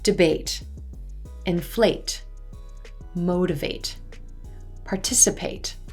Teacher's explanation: So some example verbs where ate sounds like 8 would be debate, inflate, motivate, participate. Notice you can distinctly hear the A as in gray vowel sound in these word endings.